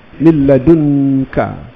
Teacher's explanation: Dalam tajwid nun mati bertemu kaf, ikhfa hakiki, dengung. Walaupun tak salah, tak dengung tak apa.